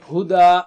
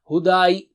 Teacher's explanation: Learn Tajweed the easy way, lesson 26a, in which we will take words with standing fatha again, but with a special case. Ya after standing fatha is not read.